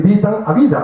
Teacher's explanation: A esto se le llama el fenómeno de sonorización de las consonantes sordas intervocálicas